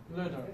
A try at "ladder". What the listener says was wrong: Open more, please. Ah.